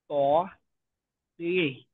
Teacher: 11 নং মাখরাজ। জিহ্বার আগা সামনের উপরের দুই দাঁতের গোড়ার সঙ্গে লাগাই উচ্চারিত হয়।